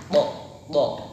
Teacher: Ya, ismat yaitu tadi keluarnya tidak lancar atau dengan hati-hati. Kemudian ada qalqalah yaitu ada suara mantulnya.